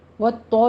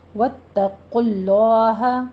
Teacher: कुल को पुर पढ़ना है, लॉ को भी पुर पढ़ना है